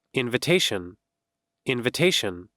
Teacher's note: See there, the first word was invitation, and it had 4 syllables. And the third syllable is stressed, means this one is the stressed.